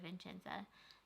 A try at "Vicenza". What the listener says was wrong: Vicenza. There's no N.